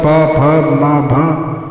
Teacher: ये दोनों ओठ सटने पर ये शब्द अक्षर निकलते हैं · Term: ओष्ठव